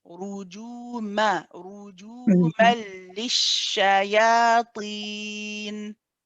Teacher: We go from ma to li. There's no sound through the nose at all. This is your idgham kamil bidun gunna.